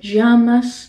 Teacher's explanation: pronounced differently in different countries you can pronounce it more with a y or maybe even sort of a j sound